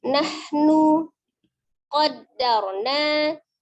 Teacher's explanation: ada ro sukun sebelumnya fathah. Maka ro-nya dibaca dengan tafkhim tebal.